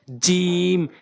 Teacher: এরপর হচ্ছে জিম, জিম জিহ্বার মাঝখানের অংশটা উপরের তালুর সঙ্গে, জিহ্বার মাঝখানের অংশটা উপরের তালুর সঙ্গে জিম।